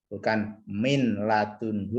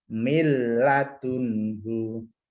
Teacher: Ini kebalikannya, idgham bila gunnah. Masuk ke huruf setelah nun, ya, setelah nun sukun atau setelah tanwin, tapi dia tidak dengung, tidak ditahan.